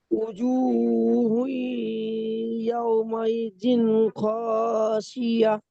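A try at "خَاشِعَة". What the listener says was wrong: খশিয়া, আইন হাজাবার আ।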